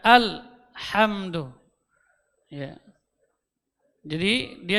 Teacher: di huruf lah juga tidak boleh keluar pantulan